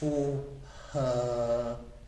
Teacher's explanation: that's an er that's not a schwa that's an er that's a long one